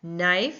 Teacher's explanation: We hear the n sound, but not the k sound.